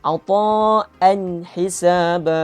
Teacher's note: Untuk saya sebutan an, bukan ang. Tak dengung.